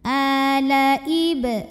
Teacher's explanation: Alaib, ada qalqalah sughra karena huruf qalqalah ba sukunnya asli dan ada di tengah bacaan, maka dibacanya dipantulkan, pantulannya kecil.